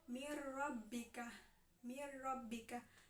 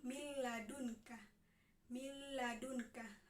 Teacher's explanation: melebur tanpa mendengung atau memasukkan huruf nun mati atau tanwin ke dalam huruf sesudahnya tanpa disertai suara yang mendengung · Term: idgam bilagunnah